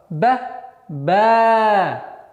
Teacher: Если буква Б с огласовкой мы произносим Б, а при появлении алифа она протягивается дольше, два раза. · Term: удлинительный звук